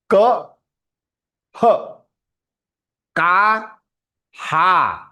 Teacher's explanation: if that K becomes dirgha, Ka, then this visargaha, this double dot visargaha will become Ha